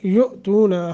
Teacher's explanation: حمزہ ساکن ہے، جھٹکا دے کر پڑھیں گے، تون حروف مدہ ہے، تھوڑا سا لمبا کریں گے، ما اس کو لمبا کریں گے 2.5 الف کے برابر چونکہ مد منفصل ہے۔